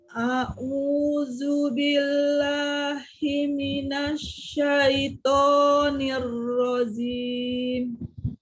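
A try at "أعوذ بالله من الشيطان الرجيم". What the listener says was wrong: Ya, nanti itu jimnya kan tadi sudah dipelajarin. Jim, bukan zim, tapi jim. Nah, tengah lidahnya ada di langit-langit atas, jim. Bukan zim, tapi jim. Tengah lidahnya menyentuh, jim.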